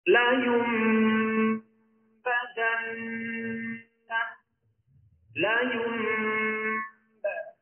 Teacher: Ia berlaku apabila nun mati atau tanwin bertemu dengan huruf ba. Maka cara membacanya adalah dengan mengubah atau menukarkan bunyi nun mati menjadi bunyi huruf mim mati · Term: yaqlab